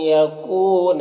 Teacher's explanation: عین یہاں پر نون ساکن کے بعد یا ہے حروف یومن میں سے، تو ادغام ناقص ہوگا، نون کو یا سے ملا کر پڑھیں گے۔ کو میں واو مدہ ہے، 1 الف کے برابر کھینچیں گے